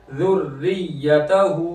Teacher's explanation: यहाँ रा बारीक होगी, ज़ेर है नीचे